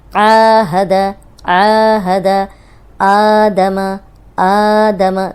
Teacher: کھڑی زبر ہے، اس کو دو حرکات لمبا کرنا ہے